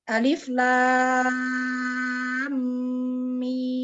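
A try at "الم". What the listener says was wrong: Kurang tuh gunahnya. Umu bahas alif jeda. Alif lam. Jadi suaranya jangan putus. Alif lam. Jadi udara terus langsung ke lam. Alif, lam, paham ya? Jadi bukan alif, jeda, lam, salah.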